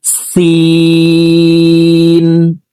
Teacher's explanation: সিন হরফকে বাইরে বাতাস বের করে ৩ আলিফ টেনে পড়তে হবে